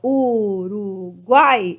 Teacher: é a última sílaba forte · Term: oxítona